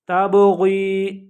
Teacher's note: تَبْغِي، اب یہاں پہ با کے اوپر قلقلہ آ رہا ہے. قلقلہ کہتے ہیں آواز کو تھوڑا سا ہلا کے پڑھنا. تبغی، تبغی نہیں پڑھیں گے، تبغی، غائن موٹا ہے تھک ساؤنڈ میں پڑھیں گے، یا مدہ ہے اس سے پہلے زیر آئی ہے.